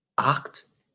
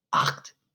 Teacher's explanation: you have to push your tongue to the back of your mouth when you pronounce the CHT. So and your mouth is going to open up all the way.